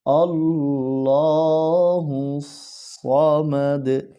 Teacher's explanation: সদ এখানে ঠোঁট গোল করে হরফটিকে উচ্চারণ করতে হবে।